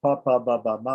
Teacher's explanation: So pa, pa, ba, ba, ma are all pronounced on the lips. And a short a, is added for the sake of pronunciation. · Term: labial row